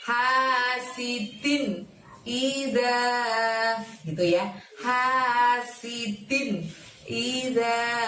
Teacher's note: Hasidin, dinnya kasrotain di situ kita harus baca jelas karena di depannya ada lafadz ida, karena itu adalah terjadi bacaan izhar maka tanwinnya harus dibaca jelas, tanwin bertemu hamzah.